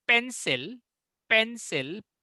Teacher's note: पेंसिल में जो पेन है, PEN है, वो स्ट्रॉन्गेस्ट एक्सेंट होगा, और जो सिल है वो सेकेंडरी एक्सेंट होगा. मतलब पेन का प्रोनाउंसिएशन थोड़ा जोर से होगा और सिल का थोड़ा आस्ते होगा.